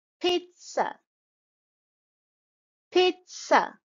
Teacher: you can see the stress is on the first syllable pit and then instead of z z of Zed sound it's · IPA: /ˈpiːt.sə/